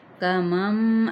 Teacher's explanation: میم ساکن کو اب یہاں پہ میم کے ساتھ مل جائے گا، کمم. اب یہ نہیں کمن، اس طریقے سے نہیں ادا کرنا، ٹھیک ہے.